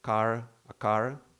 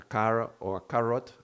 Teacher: But a car or a carrot, the tongue almost doesn't touch. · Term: approximant